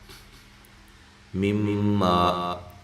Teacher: مما میم مشدد پہ غنہ ضروری ہے اور الف مدہ ہے